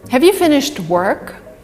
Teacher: so the emphasis is on work here and have is weak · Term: weak word